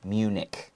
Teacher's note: even though it ends with CH, we pronounce it like a hard C sound.